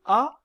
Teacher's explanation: l'avons vu dépend de l'espace entre la langue et le palais dans le cas de la voyelle a qui est la voyelle la plus ouverte de la langue française la langue est abaissée au maximum